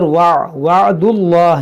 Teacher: جلال سے پہلے پیش ہے، اس کو موٹا پڑھیں گے